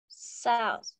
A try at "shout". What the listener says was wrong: Có chữ tờ. Chứ không phải là chữ sao không. Shout.